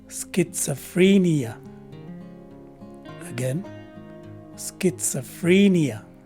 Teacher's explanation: the stress is in the third syllable with the first syllable having that secondary stress the letter c and h take a combined letter k sound